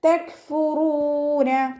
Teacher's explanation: കാഫ് സുക്കൂനാവുമ്പോൾ കുറച്ച് air pass ചെയ്യണ sound കൊടുക്കണം കേട്ടോ. തെക് ആ ഒരു സൗണ്ട് കൊടുക്കുക.